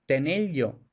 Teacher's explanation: asimilación de R más L o D más L, que se convierte en el sonido de pollo.